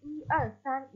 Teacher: I diucapkan dengan nada ke-1 ketika berhitung.